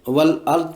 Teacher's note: حرف ضاد پر وقف میں اسے ہلنے سے بچانا ہے